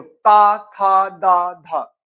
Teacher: अब देखो ता थ द धा ता थ द धा तो दंत में जा रहे हैं। ता थ द धा बोल कर देखो ना दांत में टकरा रहे हैं।